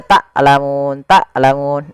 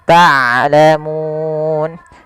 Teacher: Taklamun ini sering terjadi mengganti huruf ain dengan huruf hamzah. Harusnya dia ain dari tengah tenggorokan kita dan ain mempunyai sifat bainiah di antara syiddah dan rakhawah tidak dialirkan suaranya dan tidak terlalu ditahan suaranya tapi di tengah-tengah di antara keduanya. Tlamun. Kemudian padafal tlamun di sini ada bacaan mad arid lukun yaitu mad yang terjadi di akhir bacaan kita yang mana sebelum huruf akhirnya yang dimatikan ada huruf mad.